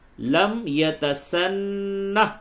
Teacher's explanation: نون کے اوپر غنہ کریں گے، تشدید ہے ، اور یہ ہا دونوں صورتوں میں نہ پڑھی جائے گی